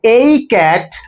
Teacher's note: I am putting a stress on this article because this time it is a stressed a cat meaning I am talking about one cat and not more than one.